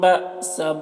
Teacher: حمزہ ساکنہ ہے تو یہاں پر جھٹکا لگے گا